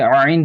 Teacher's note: یہاں سے حلق سے نکلتا ہے، بیچ حلق سے